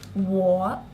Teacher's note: third tone like a check mark with your voice